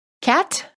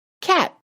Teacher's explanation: the first word you hear has a released T and the second word has a held T